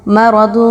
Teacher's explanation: اخفا کیسے کیا جائے گا؟ جو تنوین کی آواز ہے جس کے آخر میں نون کا ساؤنڈ آتا ہے اس کو ہم چھپائیں گے ناک میں۔